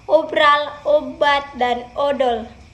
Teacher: pada vokal O, bibir dimajukan sedikit dan bentuknya agak bundar seperti pada kata obral, obat, dan odol.